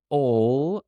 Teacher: I'm going to make that word nice and long to show that she's really, really passionate and really interested in her drama classes and drawing.